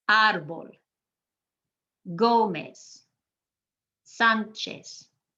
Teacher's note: you're emphasizing that first syllable